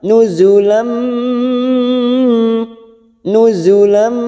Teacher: alif yang berharokat fathatain yang bertemu mim, siap masuk dan mendengung masuk ke huruf mim, namanya bacaan idgham bigunnah. Kita tekan selama 3 harokat.